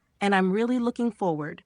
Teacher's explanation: Pitch rises at the start of this chunk because of the and, it's continuing the idea. You'll stress really looking forward.